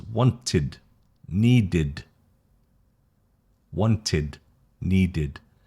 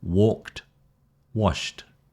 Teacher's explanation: The id and the D are both from the throat, and the T is from the front of the mouth, which is the one that produces the puff of air.